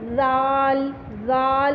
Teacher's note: इसी तरह ज़ाल में भी जो है आप जेड की तरह, ज़ा की तरह ज़बान की नोक को नीचे वाले दांतों के अंदर वाले हिस्से पर नहीं रखेंगे, बल्कि आप इसी तरह जैसे सा लिखा था, सा पढ़ा था आपने, ऊपर नीचे के दांतों की ज़बान की नोक को बाहर निकालेंगे और ऊपर वाले जो टीयरिंग पार्ट है आपका, जो आगे के जो रैबिट टीथ होते हैं, उस पर अपनी ज़बान की नोक को टच करते हुए आपने ज़ाल ऐसे पढ़ना है।